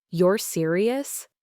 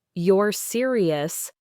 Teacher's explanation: with a flat or even slightly falling intonation, perhaps accompanied by a raised eyebrow, it often implied skepticism, disbelief, or even sarcasm. · For example, he realized that if someone said, "You're serious?" with a clear rising intonation at the end, it genuinely conveyed surprise or a question seeking confirmation